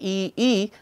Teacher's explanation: when I say e e the tongue is pushed forward in the mouth and the jaw is actually High and that's how the e e sound produced now while the